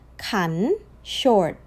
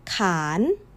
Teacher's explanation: both words rise, like a gentle question.